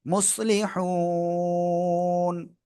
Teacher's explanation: আমরা থেমে পড়লে নুন সাকিন এবং তার আগে এক আলিফ মাদ, এজন্য আমরা তিন আলিফ টেনে পড়বো।